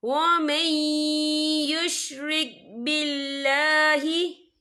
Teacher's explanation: यहाँ पे अल्लाह का नाम बारीक पढ़ा जाएगा